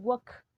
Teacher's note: recuerden que no se le pronuncia la L, ni a talk, se pronuncia solo la K